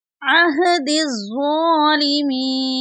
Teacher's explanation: इनके ऊपर कोई हरकत नहीं है, यहाँ पर इनको नहीं पढ़ेंगे, बल्कि दाल को हम ज़ुआ के साथ मिलाकर पढ़ेंगे और ज़ुआ को मोटा पढ़ेंगे। ज़ुआ के ऊपर शद है, इसको सख्ती से भी पढ़ेंगे।